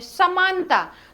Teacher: तो जो हमारी जिह्वा है वो दंत को स्पर्श करती है, दांत को स्पर्श करती है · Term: दंत श